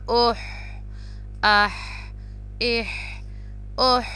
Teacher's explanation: ہا جو ہے میڈل تھروٹ سے پروناؤنس ہوگا، باریک والا ہا ہے